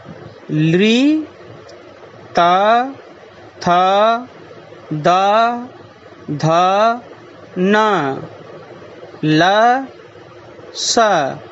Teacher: एतेषाम् अक्षराणाम् उच्चारणस्थानं दन्ताः भवन्ति।